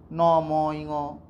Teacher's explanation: কিছু কিছু আছে নাকের সাহায্যে উচ্চারিত হচ্ছে, নাসিক্য ধ্বনি বলা হচ্ছে, ন ম ইঙ, এগুলো নাক ছাড়া উচ্চারণ করা যাবে না